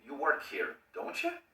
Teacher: Si yo no tengo seguridad de que tú trabajas aquí, la entonación va a subir. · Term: rising intonation